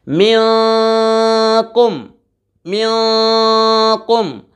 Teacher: नून साकिन के बाद काफ हुरूफ़ इख्फ़ा में से आ रहा है, गुन्ना करके पढ़ेंगे।